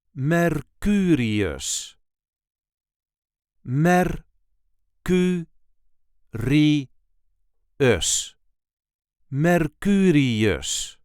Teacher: There is a light emphasis on the second syllable,